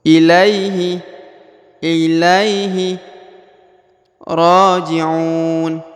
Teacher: Huruf Ra dipanjangkan 2 harokat karena di atasnya ada tanda panjang 2 harokat, yaitu huruf alif kecil ya, harus dipanjangkan 2 harokat.